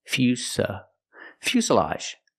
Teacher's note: a fuselage pronunciation make the u sound u f Fus Fus the S is a true S Plus the short sound uh